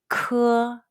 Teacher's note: It's like the K in the English word kid, but push stronger air out from the very back of your tongue and your throat when you say it. Remember, 科 is pronounced with a strong puff of breath